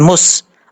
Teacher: میم کے اوپر شد ہے کیونکہ ادغام ہو رہا ہے، ادغام میں مثلین ہے، اور اس لیے یہاں پر غنہ کریں گے 1 الف کی مقدار